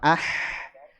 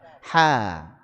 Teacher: Huruf ha keluarnya dari tengah tenggorokan